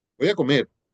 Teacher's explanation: si la oración fuera una sola palabra el acento cae en la en la palabra comer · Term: acento prosódico